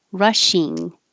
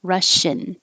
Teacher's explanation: The first is R and the E is ing. So the tongue goes very high for ing, rushing. And that's different than Russian, where the second part is in and the tongue stays lower.